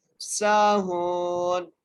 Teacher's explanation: تو یہاں پر واو مدہ ہوگی۔ اب یہاں پر کیا ہے، واو ساکن سے پہلا حرف ہا ہے، تو ہم اس کو ہا کو ایک الف کی مقدار کھینچ کے پڑھیں گے ، ساہون، پھر پڑھتے ہیں الذین هم عن صلاتهم ساہون، ٹھیک